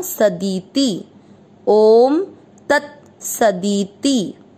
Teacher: दी और ती दोनों छोटी मात्रा, इसको लंबा नहीं खींचना